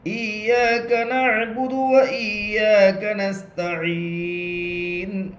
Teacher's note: نون کے اوپر پیش ہے، پیش کو حالت وقف میں جزم سے بدل کر پڑھیں گے